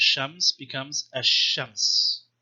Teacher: Everybody who learns Arabic in the first semester, you learn the difference between huruf shamsiya, huruf qamariya, sun letters and moon letters, which means to certain consonants, the lam of the article al is completely assimilated